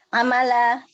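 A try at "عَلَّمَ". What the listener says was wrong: Lam dulu baru mim. Lamnya tasydid. Lamnya tasydid.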